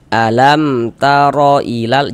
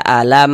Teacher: Maka ini dibaca jelas tidak berdengung. Huruf mim sukunnya kita baca jelas kemudian tidak didengungkan. Jadi baca pendek saja. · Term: izhar syafawi